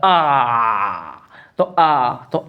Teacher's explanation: विवृत ऐसा होता है कि मुंह को सबसे ज्यादा खुलता है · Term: विवृत स्वर